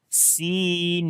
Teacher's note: when we stop, so we do not say this fatha on the noon as we stop here. · on the both places we long due to ya madda, so we say sinin.